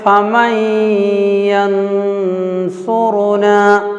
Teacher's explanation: ین بول کر نون کو اظہار بھی نہیں کرنا، چھپانا نون کو